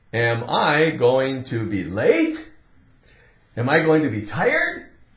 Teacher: we're going to rise up a little bit on that last word we elevate that pitch of our voice a little bit to indicate it's a question